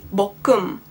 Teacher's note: the end sound of the first syllable is being carried on and kind of merged together with the beginning sound of the second syllable, creating a fluid word. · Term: Carryover Rule